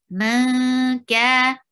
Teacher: You're hiding the sound of noon and keeping your sound in your nose and going towards the makhraj of kaf. Ma, ka. Ka is 2 counts long. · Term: Light ikhfa